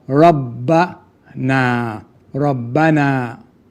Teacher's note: Noon with an alif, lengthening the alif, the fatha sound.